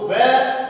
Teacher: दंतोष्ठ कहा जाता है अर्थात दंत और ओष्ठ से बोला जाता है